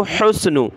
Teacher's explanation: ہا کو گلے سے نکالا، سین کے ساتھ ملایا